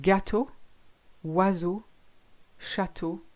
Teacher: the AU or EAU, as in the word Chateau or Bordeaux, is just O, exactly the same as the closed O you had before, just an O.